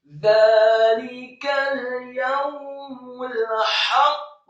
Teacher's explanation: Huruf qaf yang sukun dan berhenti di akhir ayat, kembali ke dasar hurufnya qa, bukannya tidak diqalqalahkan. Dan huruf qaf yang sukun atau waqaf wajib diqalqalahkan atau dipantulkan. Dzalikal yaumul haqq, dan haknya dibaca tipis, nyaring fathah 1 harokat.